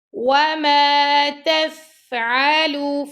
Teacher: فا پہ ہم حمز کر رہے ہیں، فا کی آواز جو ہے اس کو ہم دھیرے سے چھوڑ رہے ہیں